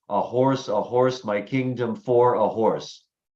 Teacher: a line of verse with five pairs of syllables where the stress is on the second syllable of each pair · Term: iambic pentameter